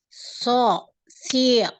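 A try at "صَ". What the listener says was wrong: Nah, ini masih dibulatkan ya. Apa namanya, bibirnya masih dibulatkan ya. Masih gitu ya. Jadi naikkan pangkal lidah. Ini menebalkan ya. Dinaikkan pangkal lidah. Pangkal lidah itu lidah bagian belakang ya.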